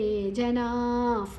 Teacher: ಹಲ್ಲಿನ ಮಧ್ಯದಲ್ಲಿ ಗಾಳಿ ಹೊರಗೆ ಹೋಗುವಂಥ ಶಬ್ದ ಫ್ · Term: ವಿಸರ್ಗದ ಉಚ್ಚಾರಣೆ